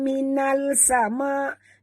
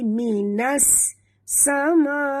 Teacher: masuk terus ke dalam sin tanpa membunyikan alif lam. Di sini dinamakan idgham syamsi.